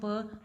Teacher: प वॉइसलेस है, बाइलेबियल है, प्लॉजिव है